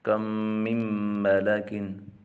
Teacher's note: میم ساکن کے بعد جب میم آ جائے تو وہاں ادغام شفوی مال غنہ ہوگا